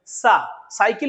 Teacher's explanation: जीभ जा तो रही है दांत के पास लेकिन टकरा नहीं रही